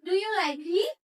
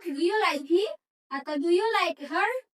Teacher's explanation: Jadi itu intonasinya naik ya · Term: intonasi naik